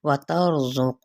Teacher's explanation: تا را ساکن ماں قبل زبر ہے یعنی فتحہ ہے، تو پھر ہم اس کو پر پڑھیں گے